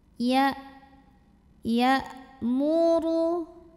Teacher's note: Ada hamzah. Salah satu sifat dari hamzah adalah syiddah dari segi suara. Syiddah itu artinya kuat atau tertahan. Maka saat membunyikan hamzah ini suaranya kayak tertahan ya, kayak nggak ada bunyi dulu. Ya muru. Huruf ra dibunyikan secara tafkhim sebab ra berbaris dhammah.